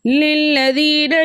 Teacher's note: یا مدہ کو 2 حرکت کی مقدار کھینچ کر پڑھتے ہیں۔